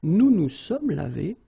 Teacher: So remember, final S is not pronounced.